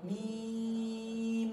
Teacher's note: Kira-kira lam, mimnya kita panjangkan, ya guna mutawalah sebagaimana sebelumnya guna mutawalah, ya materi yang sebelumnya, ya lam, nah mim, lam mim, mimnya panjang 6 harokat